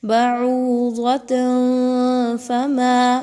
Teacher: تنوین کے بعد فا کا حرف آ گیا، اخفا کریں یہاں پر۔